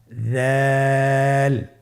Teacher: উচ্চারণ করার সময় অবশ্যই তিন আলিফ টেনে পড়তে হবে। জালের মাখরাজ হলো জিহ্বার আগা। সামনের উপরের দুই দাঁতের আগার সঙ্গে লাগিয়ে উচ্চারিত হয়।